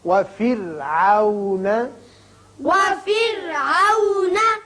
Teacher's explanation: را کو باریک پڑھیے اس لیے کہ پیچھے زیر ہے